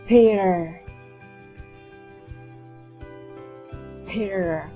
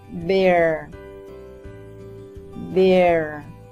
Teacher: P, the voiceless sound, B, the voiced sound. Now put your paper in front of your mouth and make the P sound.